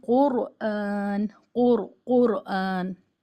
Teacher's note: रा पर जजम है उससे पहले पेश है तो इसको मोटा पढ़ेंगे · را پر جزم ہے، اس سے پہلے پیش ہے تو اس کو موٹا پڑھیں گے